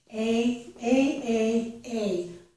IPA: eɪ